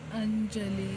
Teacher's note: ಅನುಸ್ವರಕ್ಕೆ ಇಲ್ಲಿ ನ ಸೌಂಡ್ ಬಂದಿದೆ